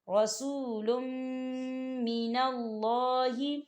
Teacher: دیکھیں لام کے اوپر تنوین ہے اور اس کے بعد میم آ رہا ہے، میم کے اوپر تشدید ہے اور ہم جو ہے تنوین کو جو ہے میم کے ساتھ ملا کر پڑھیں گے، یعنی کہ تنوین کو ہم میم کے اندر مدغم کریں گے